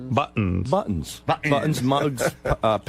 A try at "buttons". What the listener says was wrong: T. You got to say a T.